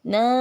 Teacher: na sekali ayun karena 2 harokat merupakan mad tabi'i